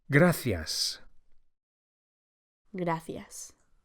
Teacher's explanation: The C of gracias is pronounced as an English TH, as in thanks